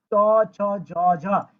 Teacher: আমাদের যে জিহ্বার তালু আছে ওই তালুতে স্পর্শ হয়, এই জন্য এটাকে বলা হয় তালব্য বর্ণ বা তালব্য বর্গীয় বর্ণ।